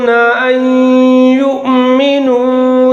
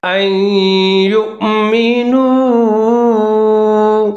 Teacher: یہاں پر نون ساکن ہے، نون ساکن حذف ہو جائے گا، حمزہ اور یا دونوں ملا کر پڑھیں گے، یا مشدد ہے جہاں پر ادغام کریں گے غنّے کے ساتھ